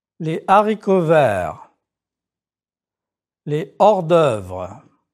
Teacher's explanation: Liaison and elision are not used with this H. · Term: aspirate H